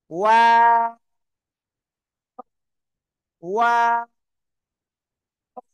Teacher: প্রথমে গোল, মাঝখানে আবার দুই দিকে দুই ঠোঁট চলে যাবে, আবার শেষে কি দুই ঠোঁট গোল হবে।